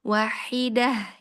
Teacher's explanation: jadi dibedakan antara ha yang dari wasatul halqi ya dengan yang di tenggorokan paling bawah ya